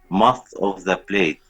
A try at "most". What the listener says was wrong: Not must. Are you following the American accent or the British accent? So you say most.